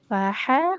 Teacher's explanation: Huruf h-nya di tengah tenggorokan ya